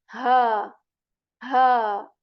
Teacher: this ha letter is articulated from the portion of the throat that is the you know lower one which is near to the chest